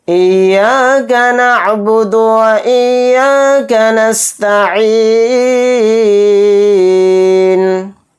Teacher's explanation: یا کے اوپر تشدید ہے، یا کو دو بار پڑھیں گے، ایک بار تو یا کو حمزہ کے ساتھ ملائیں گے، پھر یا الف زبر یا کے ساتھ پڑھیں گے تشدید کو، تو اسی حساب سے دو بار یا پڑھا جائے گا.